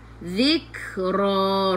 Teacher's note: Zadi hujung lidah keluar daripada gigi depan. Zik kena ada angin sikit sahaja, jangan banyak. · Ra bila berhenti baca 2 harakat. Ra baca dengan tebal, ra baris atas tafkhim.